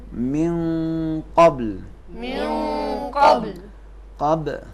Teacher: نون کو قاف کے مخرج میں چھپائیں گے